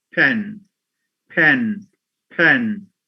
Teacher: in the word pen, because it occurs at the beginning and is followed by a vowel, this phoneme has an aspirated allophone